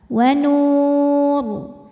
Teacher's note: Karena kebetulan huruf sebelumnya juga sukun, maka yang jadi penentu adalah yang nun. Karena nun berharokat dhammah maka ro tebal. Wa nur. Jika diteruskan juga sama ya, ro-nya tetap tebal karena harokatnya dhammah.